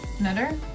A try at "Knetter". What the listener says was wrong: Yeah, the K is definitely silent. It's not Knetter.